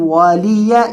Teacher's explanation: یعنی یہ جو یا ہے یہ مشدد نہیں پڑھنا